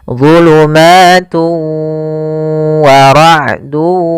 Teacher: Nah, yaitu idgham yang dia cara membacanya tanwinnya dimasukkan ke huruf waw dan ditahan gunnahnya. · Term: idgham bi gunnah